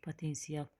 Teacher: potensial deməli a kimi tələffüz olunur. I ilə də a-nın arasına y səsi artırılır. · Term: səs artımı